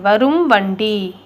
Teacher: இம் தன் அரை மாத்திரையிலிருந்து குறைந்து கால் மாத்திரையாக ஒளிக்குது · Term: மகர குறுக்கம்